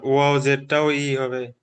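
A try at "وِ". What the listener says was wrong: ওয়াউজের ই হবে না, ওয়াউজেরটা হবে উই। উই, বি আর ইর মাঝখানে ভি, একটু ভির মতো আওয়াজ হবে ভি। ঠিক আছে, ওটা একটু ব্যালেন্স রেখে বলতে হবে। ই আর বির মাঝখানে রেখে ভি, ওয়াউজের ভি।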